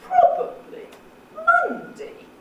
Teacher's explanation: these are examples of the low-level tail. And low-level tails always follow falling tones.